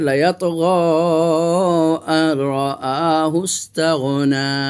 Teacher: এই নুনটা নুন সাকিনের পর র এসেছে, ইদগাম হয়ে গেছে, নুন সাকিনের উচ্চারণটা রর সাথে ইদগাম হয়ে গেছে, কিন্তু গুন্না হবে না, এটা হলো ইদগামে নাকিস।